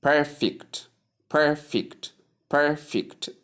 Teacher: we have a force on per or the first syllable while the other one second syllable receives a shorter or slightly lower pronunciation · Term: stress